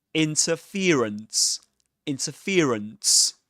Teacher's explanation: the main stress goes on fear, the syllable fear. And the secondary stress goes on the syllable in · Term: double stressed